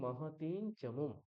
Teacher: চ বর্গের যে পঞ্চম বর্ণ ঞকার, সেটাই অনুস্বারের জায়গায় উচ্চারিত হবে। তাহলে মাহাতিন চমুম, ঠিক আছে।